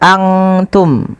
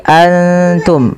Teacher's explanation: samarkan nunnya kepada makhraj daripada huruf ta. Kalau makhrajnya misalkan ta itu makhrajnya adalah perbatasan ujung sari kita, ujung lidah kita menempelkan dengan di atas itu gusi atas dan gigi sari atasnya.